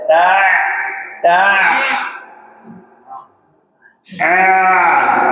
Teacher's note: Untuk ain a i u ain itu punya sifat tawas. Dia suaranya tetap mengalir. Jadi tidak terhenti.